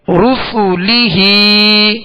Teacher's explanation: را سین اور لام کو دراز نہیں کریں گے